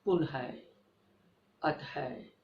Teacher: इसमें आधे ह की आवाज आती है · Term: विसर्ग